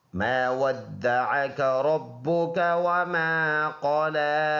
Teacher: واو اور دال اس شد کی وجہ سے دونوں ملا کے پڑھیں گے جماؤ کے ساتھ